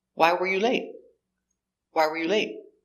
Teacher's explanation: It's an information question, so the intonation goes down at the end.